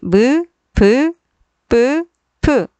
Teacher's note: 두 입술 사이에서 나는 입술 소리